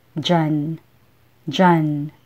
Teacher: diyan is often pronounced as dyan